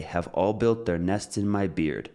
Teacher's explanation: And then we could also even consider all built as well. All tends to be stressed because you're emphasizing the fact that it is everyone.